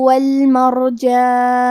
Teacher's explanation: حرف الرا کا حکم ہے تفخیم تو ہمیں را کو موٹی آواز میں پڑھنا ہے